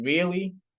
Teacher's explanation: example if I said really indicate surprise and so obviously really this is a higher intonation tone it's it indicates surprise or disbelief